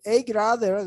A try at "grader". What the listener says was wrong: Very nice. I like the pronunciation here.